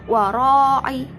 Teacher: bacaan mat wajib mutasil sebab mat tabi'i bertemu hamzah dalam satu kalimat panjangnya 2,5 alif atau 5 harokat